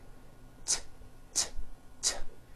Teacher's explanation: it's unvoiced your vocal cords are not vibrating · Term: T sound